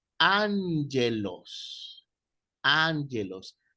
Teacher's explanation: la doble repetición de gamma pronuncia una N